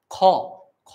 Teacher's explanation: খ তো উচ্চারণ করছো কণ্ঠ থেকে, কিন্তু তার সঙ্গে, সঙ্গে একটা অ এর উচ্চারণ করতে হচ্ছে। অর্থাৎ কি স্বরধ্বনির সাহায্য নিতে হচ্ছে।